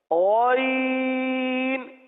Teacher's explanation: اب اس کو غین پڑھنا جیسے کل عرض کیا تھا گاف کی طرح نہیں پڑھنا. غین حلق کے اندر اتار کر پڑھنا ہے